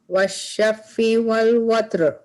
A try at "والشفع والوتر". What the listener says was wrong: Can you pronounce the عين better? والشفع والوتر